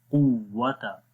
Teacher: قاف کو زبان کی جڑ جب تالو کے نرم حصے پہ لگے گی تو قاف ادا ہوگا، قاف یعنی یہ نقطوں والا قاف، قوت۔